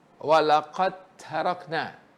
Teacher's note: Kalau saya baca walaqad tarakna, saya tak idghamkan dal tadi ke ta. Kena idgham, masukkan qad di situ terus ke ta.